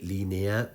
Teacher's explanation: la E está deslizando hacia la vocal más abierta. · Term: función deslizante